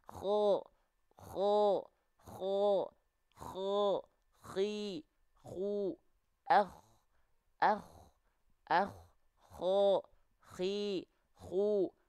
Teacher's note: dia akan mengeluarkan aliran nafas yang seperti mendengkur · ada ngoroknya karena dia punya sifat hams hams itu mengalir nafas Nah kenapa aliran nafasnya karakteristiknya mendengkur karena dilafalkan dari ujung tenggorokan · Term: huruf k